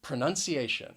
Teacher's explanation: is going to be on that fourth syllable that a pronunciation the first two syllables have that schwa sound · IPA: prə